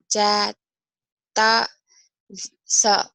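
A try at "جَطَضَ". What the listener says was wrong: Lo, ada titiknya. Ketukar kamu. Jatodo. Kalau tadi so. Ayo lagi, ulang.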